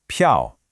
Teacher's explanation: the fourth tone is that sharp decisive drop in pitch. Think of it like a quick firm chop down.